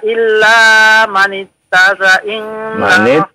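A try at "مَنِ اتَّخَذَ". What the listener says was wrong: Lihat, manit takhadha. Ada kha di situ, huruf kha-nya. Manit takhadha.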